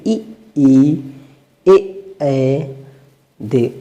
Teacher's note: इसके उच्चारण करते समय होठों की आकृति जो है वो अवृत्ताकार होती है